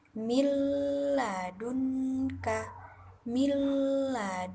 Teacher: dengan cara lafaz keduanya itu seakan-akan diberikan tanda tasydid dengan suara yang tidak berdengung atau tanpa berdengung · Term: idgham bila gunnah